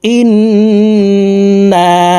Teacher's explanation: জবর না ইন্না হরকতের বামে নুনের উপরে তাসদিদ আছে এ কারণে এই হামজা তাশদি নুনের সাথে নাকের বাঁশি থেকে তিন সেকেন্ড পরিমাণ গুন্নাহ করে ধরে রাখবো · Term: ওয়াজিব গুন্নাহ